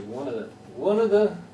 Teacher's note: one of the one of the becomes like one word yeah it runs together because if you stress one then the other ones get compacted